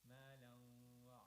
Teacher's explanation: Jama'a malan wa lam tanween followed by waw shadda idgham with gunna. Malan wa so you waw stress a little on the waw shadda.